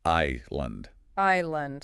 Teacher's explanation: Island, like your I, then lund. No S sound at all. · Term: silent